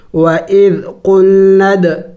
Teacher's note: دال حروف قلقلہ میں سے ہے اور ساکن بھی ہے تو قلقلہ بھی کریں گے یعنی ہلا کے پڑھیں